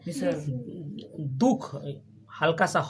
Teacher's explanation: विसर्ग स्वर के बाद आता है, उच्चारण ह की तरह होता है